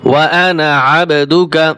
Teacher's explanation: খলাকতানি ওয়া আনা আবদুকা, খলাকতানি ওয়া আনা, এই আনায় টান হবে না